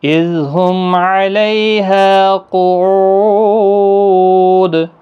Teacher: قاف مستعلیہ ہے، پر پڑھنا ہے